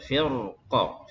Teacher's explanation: Jadi waqafnya di sini ada dua cara ya. Waqaf dengan sukun qaf, firqo, qafnya qalqalah, atau dengan raum ya.